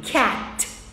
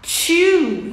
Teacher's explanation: O som é t, dando uma sopradinha. Então, não confunda o som de T, não transforma em TCH, não transforma em tch.